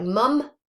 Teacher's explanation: So that's our voiced bilabial nasal. That's present in words like mum, both at the beginning and at the end.